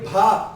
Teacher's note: पा बिना होठों की सहायता से आप पा नहीं बोल सकते। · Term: ओष्ठ